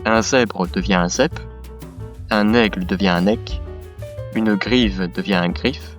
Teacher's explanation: J'aurais pu diviser cette règle en plusieurs sous-règles, mais en réalité c'est une seule règle, c'est-à-dire que c'est le dévoisement. Les consonnes prononcées avec vibration des cordes vocales sont prononcées sans.